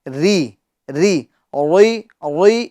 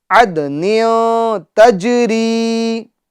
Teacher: قلقلہ ہوگا، اور را میں یا مدہ ہوگا، یعنی ایک الف کی مقدار ہم اس کو کھینچیں گے، اور را کے نیچے زیر ہے تو را کو باریک پڑھیں گے